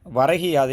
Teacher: இந்த சொல்லை விரைவாக ஒலிக்கும்போது வரகி யாது என்று மாறுவதை நாம் உணரலாம். முதல் சொல்லினுடைய இறுதியில் உள்ள கூ என்னும் எழுத்து கி என்று ஒலிப்பதை நாம் இதில் உணர முடியும். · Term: குற்றியலிகரம்